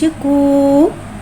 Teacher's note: वाव साकिन से पहले पेश आ रहा है, वाव मद्दा हो रहा है, लिहाजा वाव मद्दा को एक अलिफ यानी 2 हरकत के बराबर खींच के पढ़ेंगे। काफ वाव पेश कू।